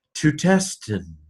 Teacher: This has dropped its omicron because it's followed by a vowel, so that you can say it nice and smoothly.